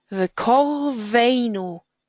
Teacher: Kor is an unstressed, closed syllable.